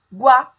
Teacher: Água, a segunda sílaba, guá, tem o iá juntos. Começa com a semivogal U e depois vai para a vogal A. Portanto, nós temos um ditongo crescente.